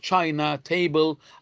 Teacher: some two-syllable words in English have the stress on the first syllable, like China, table